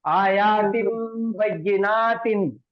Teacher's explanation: यहाँ पे छोटा मीम लिख के आता, आयातिन बय्यिनातिन। نون کی آواز کو میم سے بدل کے غنہ کر کے پڑھیں گے